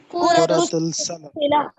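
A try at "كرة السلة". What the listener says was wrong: देखें, कुरतुस तीन पे भी लाम पे भी तशदीद। दोबारा बोले, कुरतुस सल्ला,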